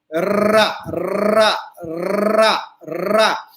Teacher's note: रा में जीव कांपेगी, इसलिए इसको प्रकंपित या लुंठित, उठना गिरना, तो ये लुंठित या प्रकंपित दोनों शब्द, इसका मतलब ये रा।